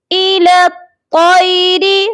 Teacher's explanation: الی الطیر، یہاں پر لام کو تو کے ساتھ ملائیں گے، درمیان میں آپ دیکھ لیجئے 3 حروف ہیں جو بنا حرکت کے ہیں، یا، الف اور لام، یہ تینوں حروف نہیں پڑھے جائیں گے۔ الی الطیر، او جو ہے حروف مستعلیہ ہے، یعنی کہ ہیوی لیٹر ہے، موٹا پڑھے جانے والا حرف ہے، اس کو ہم موٹا کر کے پڑھیں گے۔